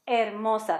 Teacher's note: So we're pretty much going to hide that H and pronounce the rest of the stuff.